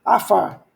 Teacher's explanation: Aqui é uma consoante que não tem som, o som é da vogal. E aqui nós temos o P sem daguesh, fica F, som de F.